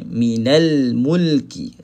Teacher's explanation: tidak ada tawallud, tidak ada lantunan pada huruf lam. Yang melantun hanya lima huruf sahaja.